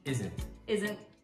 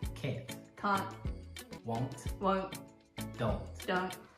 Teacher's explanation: There is no T sound. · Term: implied T